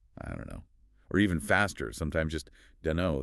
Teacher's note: you rarely hear that final T sound of don't pronounced clearly before the K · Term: elision